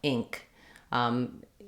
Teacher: I'm going to hear that burst of air it's an aspirated K